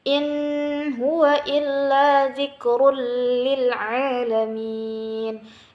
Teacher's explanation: Karena itu ada tanwin bertemu dengan huruf lam. Hukumnya adalah idgham bila gunnah, dimasukkan tetapi dengan tidak ada dengungnya